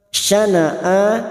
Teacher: Syana'a hamzah yang berharokat alif kecil di atas. Syana'a namanya mad badal, cabang dari mad tabi'i, 2 harokat kita panjangkan.